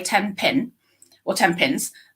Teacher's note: the N at the end of 10 is more likely to be M rather than n